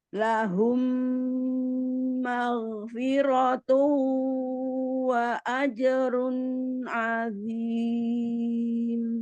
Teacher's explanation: Tanwin ketemu dengan ain, izhar halqiyah dibaca dengan jelas. Tapi hanya bunyi nun sukunnya ditawasudkan.